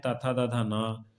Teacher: ता था दा था ना, और इसका उच्चारण स्थान है दांत, ऊपरी दांतों के निकट से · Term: दंत वर्ण